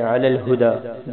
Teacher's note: دال پہ کھڑی زبر بھی ہے اور مد بھی ہے، اس کو تھوڑا سا لمبا کرنا ہے